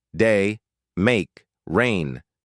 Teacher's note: Ei as in day. Start at a mid E position, then glide smoothly toward I. The mouth closes slightly.